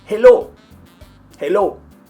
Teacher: they don't pronounce the h and they're pronouncing the L like in Spanish